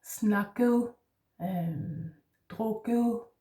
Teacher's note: ET endings in Danish, it's often an ending, is a soft D sound